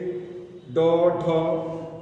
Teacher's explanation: फिर उत्क्षिप्त व्यंजन, इनके उच्चारण में जिह्वा कठोर तालु से स्पर्श करते हुए प्रत्यावर्तित होती है और नीचे के दांतों पर थपकी देती है। जैसे ड, ढ ये जो होते हैं ये उत्क्षिप्त व्यंजन होते हैं।